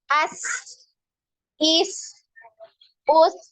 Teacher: ketika sukun ya huruf sin ini dipanjangkan aliran suaranya